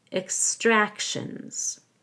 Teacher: The TI makes an SH sound, and the S at the end is actually a Z because the S is following an N. · actual extractions again in extractions the x is a k s we stress the a because of the i o suffix